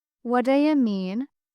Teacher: The do you becomes dia. The what blends into wada.